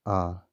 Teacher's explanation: जब हम आ बोलेंगे दोस्तों, जीभ का मध्य भाग जो होता है वो काम करता है।